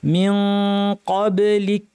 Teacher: মিন ক্বাবলিক, কব বাতে ছোটটা কলকলা খেয়াল রাখতে হবে। যদি এখানে আমরা থামি, কাফের শেষে বাতাস বের করার কথা খেয়াল করতে হবে।